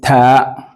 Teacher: The tip of your tongue touches behind your four upper incisor teeth